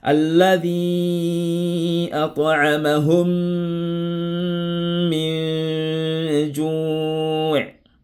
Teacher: deux mimes ont formé un seul mime avec la voyelle shadda. Un seul mime avec shadda. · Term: idgham shafawi